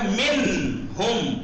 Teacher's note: नून बिल्कुल जाहिर होगा, अपने मखरज से अदा होगा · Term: इजहार